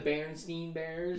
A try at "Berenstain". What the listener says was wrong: yeah, but it's Berenstain. It's Berenstain, not Berenstein, but we call it Berenstein.